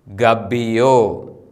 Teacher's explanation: അതിന് തൊട്ടു മുമ്പിലെ അക്ഷരം ഗോമാൽ. ഗോമാലിൻ്റെ ആ എന്ന സ്വരം ഹ്രസ്വമായി ഉച്ചരിക്കുന്നു.